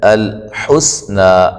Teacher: سین کو باریک سیٹی سے مد اصلی ہے، وقفاً بھی ایک الف کی مقدار کے برابر